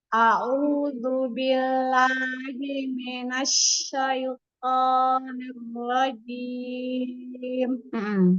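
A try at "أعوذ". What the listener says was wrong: Masih ketebalan. Coba ditipiskan. Bukan a'udzu. Tipis. A'udzu. Cempreng ya. Bukan Bukan a'udzu. Yuk ditipiskan. A'udzu. A'udzu. Lebih cempreng ya suaranya. Ringan. A'udzu. A'udzu. Tipis. Bukan a'udzu. A'udzu. A'udzu. Dorong. iya masih ketebalan ya huruf ain dan zal. Itu huruf tipis, huruf istifal ya.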